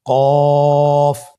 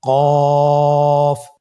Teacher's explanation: কফের মাখরাজ হলো জিহ্বার গোড়া তার বরাবর উপরে তালুর সঙ্গে লাগিয়ে উচ্চারিত হয়।